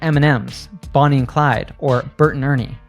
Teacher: we just say and like an N sound